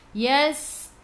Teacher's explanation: Na yas masuk ke dalam sin. Sin ada sukun. Sifat huruf sin safir bunyikan